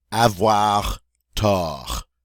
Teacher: we don't say the final T there